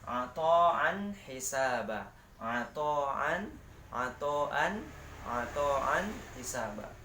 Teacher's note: Tanwin ini bertemu dengan ha ya. Jadi hukum bacanya izhar. Jadi harus dijelaskan dan terang.